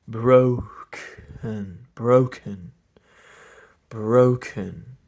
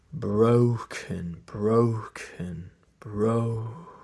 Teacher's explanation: Try to see if you can hear how I'm not phonating all the way up to the K. It kind of sounds like I am, and sometimes I can't even really tell, but broken, broken, broken.